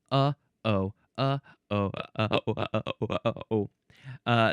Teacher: I'm using the thing in my throat by my vocal cords uh to stop the sound.